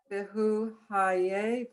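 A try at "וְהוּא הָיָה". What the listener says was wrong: Haya. Look at the vowels.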